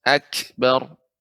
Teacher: Tapi bukan pantulan, bukan akbar, salah. Ya, bukan memantul, akan tapi dia sifatnya hamus, adanya aliran udara.